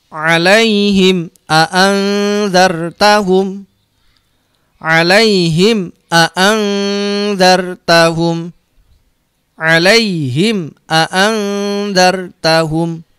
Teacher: Jadi jelas di bibir. Cara bacanya harus dirapatkan bibirnya, mingkem rapet dan tidak boleh mendengung. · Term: idhar syafawi